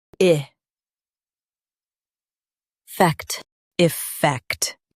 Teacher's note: Effect. Stress fact and keep I light.